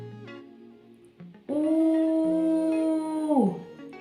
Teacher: ми цей звук вимовляємо довго тягнучи його